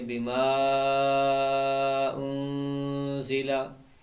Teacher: यहाँ पर अलिफ मद्दा के बाद हमजा अलिफ की शक्ल में है तो यहाँ पर मद्द मुनफसिल है, इसको भी लंबा करेंगे। इस मद को पूरा करें, कम अज़ कम 3 सेकंड 4 सेकंड तक इसको खींचना है।